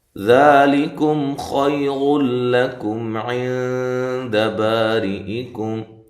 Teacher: لام کو باریک پڑھنا ہے، لام کو موٹا نہیں کرنا ، کم کاف کو باریک، میم ساکنہ کا یہاں اظہار ہے،